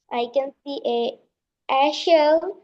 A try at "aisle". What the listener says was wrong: বলবো আইল, হ্যাঁ আইল বলবো, এস এর উচ্চারণ হবে না, আইল।